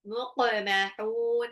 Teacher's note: qofnya itu dipantul qalqalah muqmahun. H-nya itu mad ad sukun.